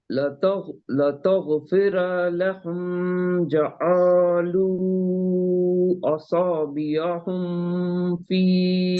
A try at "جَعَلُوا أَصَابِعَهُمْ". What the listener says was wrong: نہیں یہ تمام میم ہے نا. یہ تمام میم. لتغفر لهم جعلوا اصابعهم. آپ ہم نہیں کریں گے. اصابعهم پورے اظہار شفیع ہے نا.